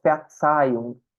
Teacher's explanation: o Z tem um fonema bem específico do alemão, que ele faz som de TS.